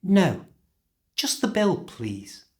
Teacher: this is not a question but a request so the pitch should go down at the end